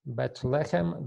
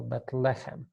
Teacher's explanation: Bethlehem, the accent is on the first syllable